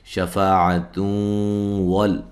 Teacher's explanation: نون تنوین کا ادغام ہوگا مع الغنہ